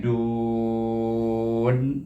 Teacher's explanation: Dan nun ini baris di atas bunyi na, tetapi kita wakaf dekat sini sebab ayat yang kedua. Jadi kita baca dengan mat aridli sukun, iaitu bunyinya dun. Daripada baris depan dal, makhraj dal pergi kepada makhraj bunyinya nun.